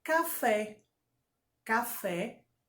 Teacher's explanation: café é oxítona porque fé é a sílaba tônica